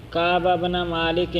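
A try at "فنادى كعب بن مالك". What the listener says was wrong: فنادا چھوڑ رہے ہیں لفظ آپ خیال کیا کریں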